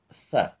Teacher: Sa itu ujung lidah nempel dengan ujung gigi yang di atas ya. Ujung giginya itu nempel dengan ujung lidah.